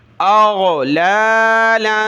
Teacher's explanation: دو زبر تنوین کلرفل ہے، ناک میں آواز پیدا ہوگی